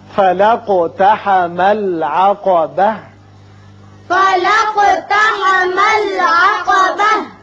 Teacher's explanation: اور ملانے کی صورت میں تا پر زبر پڑی جائے گی، وقف کی صورت میں تا ساکن ہو کر ہا بن جائے گی